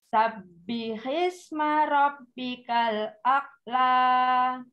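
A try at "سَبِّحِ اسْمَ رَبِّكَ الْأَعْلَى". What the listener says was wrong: Bukan ak tapi a. A'la.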